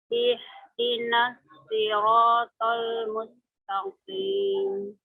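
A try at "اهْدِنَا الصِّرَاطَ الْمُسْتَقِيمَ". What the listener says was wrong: Coba suara tadi ya, suara tajam. Suara tajam pada huruf shadnya Bu boleh diperjelas lagi ya Bu ya. Nah, suara tajam itu datang dari mana? Atau kenapa bisa ada, yaitu karena ujung lidah kita ditempelkan Bu ya.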